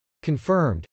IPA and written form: kənfˈɝmd (confirmed)